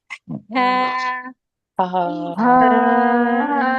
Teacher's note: پہلے ہوا نکلے آپ کے ہاتھ پہ ٹچ ہو پھر آواز نکلے گی